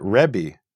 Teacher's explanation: If you listen to Jews today, most of them will pronounce it rebbi, with an EH